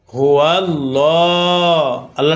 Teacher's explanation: এ আল্লাহ সাথে লামকে পড়েছি অর্থাৎ মোটা করে পড়েছি